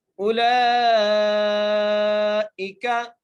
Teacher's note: اب اس لام کو بھی ہم 5 الف کی مقدار کھینچ کے پڑھ رہے ہیں